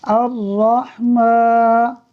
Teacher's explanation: حمزہ، را زبر ار، را ح زبر رح، الرح، میم کھڑا زبر ما، الرحمن، نون پیش نو، الرحمن، حمزہ کو ڈائریکٹ را سے ملائیں گے، لام پڑھنے میں نہیں آئے گا، میم پر کھڑی حرکت ہے اس لیے اس کو کھینچیں گے، اور نون پر حرکت کی وجہ سے اسے نہیں کھینچیں گے۔